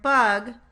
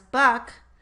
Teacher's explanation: the g sound changed only in voicing, not place or manner of articulation, from voiced to voiceless at the end of the word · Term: final devoicing